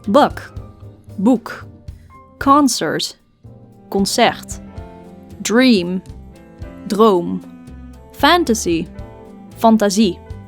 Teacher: the main difference being that Dutch consonants do not have aspiration like in English sounds like P C ta da and the like are absent